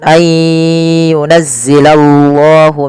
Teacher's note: tebalkan lafal Allah karena di situ lamnya lam tafkhim